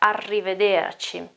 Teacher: we have a double R there, and so that sound is even more emphasized, is even stronger. You can really hear that, arrivederci.